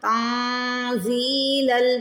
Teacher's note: تا نون زبر تن ہوتا ہے تو جو نون کی آواز آ رہی ہے اس کو چھپائیں گے، اخفا کریں گے